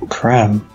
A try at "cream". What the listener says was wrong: It's cream. Just sounded like French or something.